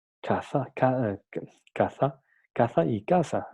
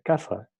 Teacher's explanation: en esas partes no pronuncian el sonido C y lo pronuncian S, entonces sería casa, sería idéntico.